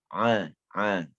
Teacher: huruf Ain ini keluarnya pada tengah tenggorokan kita